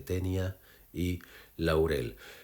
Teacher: Encontramos las vocales cerradas combinadas con la abierta en un mismo impulso silábico. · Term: diptongo